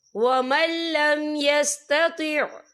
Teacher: یا دیکھیں ومل، یہاں نون ساکن ہے، نون ساکن کے بعد جو ہے لام آ رہا ہے، اور لام جو ہے حروف یرملون میں سے ہے، تو یہاں پر ادغام ہوگا، تو ہم اسے بنا غننے کے پڑھیں گے